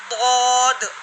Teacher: ज़बान की करवट जब ऊपर की 5 दारों से लगे, चाहे दाएं तरफ से हो या बाएं तरफ से, तो उससे दौद अदा होता है, ठीक है।